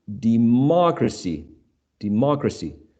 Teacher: so the stress goes on the third syllable from right to left